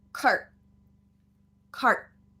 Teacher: so it's going to the r car and then stopping with that t the tongue is going up to the roof of the mouth car the r is here with the tongue in the middle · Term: stop t